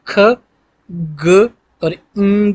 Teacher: यानी कि ख, ग और ing जो है ये व्हीलर साउंड्स हैं, और जो आपकी बैक ऑफ द टंग है वो टच करती है against the soft palate to produce these sounds